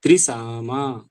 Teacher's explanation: त्रि नहीं रुकना है क्योंकि त्रि ह्रस्व है त्रिसा त्रिसामा त्रिसाम कर देंगे तो म ह्रस्व हो जाएगा त्रिसमा